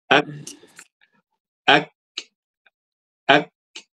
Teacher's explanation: baca huruf kaf pangkal lidah tuh nek ke atas. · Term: hamas